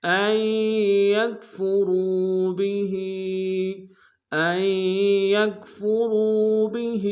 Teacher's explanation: وقد امروا ان یکفروا به، ان یکفروا به، آئی میں حمزہ کو یا کے سامنے آئیں گے، یا کے اوپر تشدید زور دیں گے، نون کے ساتھ نہیں ملیں گے، را کو واو کے سامنے آئیں گے، واو مد ایک انداز میں کھینچیں گے، بھی میں ہا کے نیچے کھڑی زیر ہے، ایک انداز میں کھینچیں گے.